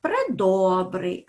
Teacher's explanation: у префіксі пре У нас є ненаголошено а ми знаємо що е у вимові якщо він не наголошений то він уподібнюється до звука и так тому він у нас не звучить чітко для цього і